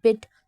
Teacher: जो बी है जैसे बिट तो हमारे होट बंद हो रहे हैं